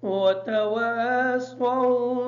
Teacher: سو کی جو سواد ہے اس سواد کو کلیئر کریں گے تاکہ سین کی آواز ادا نہ ہو۔